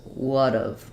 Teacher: It's not a strong D, not would've. It's a flapped T or D, which is just doesn't have that same buildup of pressure and burst of air. So it's very light, would've.